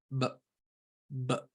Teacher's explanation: the ever so short b plosive